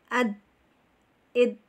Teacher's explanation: Ziddah adalah bila mana dal ini tersukunkan atau tertasjid, dia akan terputus suaranya kita ya